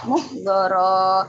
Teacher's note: mengganti tanwinnya menjadi fathah panjang dua harokat